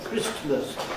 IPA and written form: ˋkrɪstməs (Christmas)